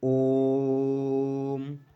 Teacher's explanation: जाएंगे लेकिन लुप्त स्वर जो होते हैं इनमें जो होता है दीर्घ स्वर से भी ज्यादा टाइम लगता है या आप कह सकते हैं दो मात्रा से भी अधिक टाइम लगता है दो मात्रा में जो जितना टाइम लगता है उससे भी अधिक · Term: प्लुत स्वर